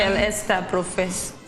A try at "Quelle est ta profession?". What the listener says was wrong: Yeah, you will not pronounce the S. Quelle est?